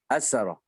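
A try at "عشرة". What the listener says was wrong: Asyarah. Asyarah. La tansa. Sya. Asyarah.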